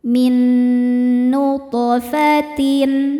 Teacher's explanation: Cara bacanya th dipantulkan dengan pantulan yang kecil tapi tetap tebal karena tho huruf tebal. · Po sukun hukumnya qalqalah sughra karena ada huruf qalqalah di tengah-tengah bacaan dan sukunnya asli bawaan dari kalimat ini. Cara bacanya to dipantulkan dengan pantulan yang kecil tapi tetap tebal karena to huruf tebal. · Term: qalqalah sugro